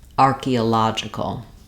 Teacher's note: This is stressed on the la syllable, the archaeola, the fourth syllable instead of on the ah syllable. And so it changes which letter O says ah and which letter O says the sound. · We still maintain our R and key syllables and vowel sounds, and then now this first O becomes our schwa, the sound, and where our stressed syllable is, then in that syllable, letter O says the ah. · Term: syllable stress changes